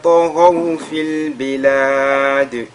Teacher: Ici, la lettre ta et la lettre ra, les deux lettres sont lues avec at-tafkhim.